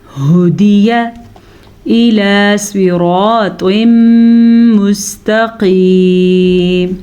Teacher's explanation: سواد کو پر پڑھیں گے کیونکہ سواد حروف مستعلیہ میں سے ہے